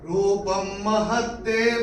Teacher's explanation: प के ऊपर अनुस्वार के बाद का अक्षर है म, तो इसका उच्चारण होगा म। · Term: अनुस्वार का उच्चारण होगा म